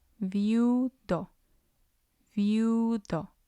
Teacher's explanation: And we have, on the second syllable, we have I and U. They're both weak vowels, and the stress will fall on U because it's the last one.